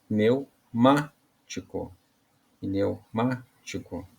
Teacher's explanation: então a sílaba mais forte é o ma tá é uma palavra proparoxítona ela vai acento no a aado então aado a característica